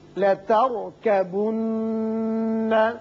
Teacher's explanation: یہ را ساکن جو ہے پر پڑھیں گے اس لیے کہ اس سے پچھلے حرف کے اوپر زبر ہے اور نون مشدد ہے، اس کو غنہ کریں گے